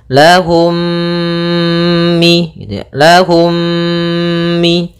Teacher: cara membacanya mim yang pertama dimasukkan kepada mim kedua dan ditahan gunahnya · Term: idamimi